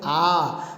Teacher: यानी ऐसा स्वर जिसके उच्चारण के समय मुख विवर जो है या मुख का द्वार जो है पूरा खुल जाता है। और दोस्तों वो केवल एक ही है, वो है आ। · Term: ओपन